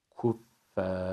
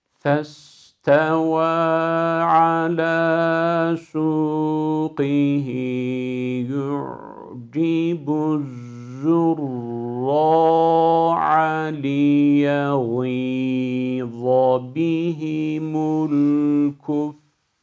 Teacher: Hiç kalınlaştırmadan okumamız gerekiyor. Yarı yolda harfi ra'nın kalınlığından etkilenip kalına yamutmayacağız. Sonuna kadar uzatma boyu incelik devam edecek. Bakın yarı yolda A'ya döndü.